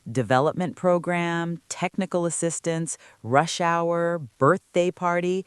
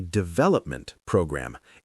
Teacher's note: For these compound nouns, the main stress falls on the first word.